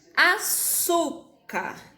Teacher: A minha sílaba tônica, a minha sílaba mais forte é o su.